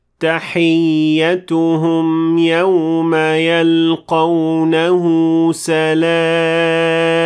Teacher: So, adding that qalqala to the meme is wrong. When you end with meme, you should just end with the lips closed.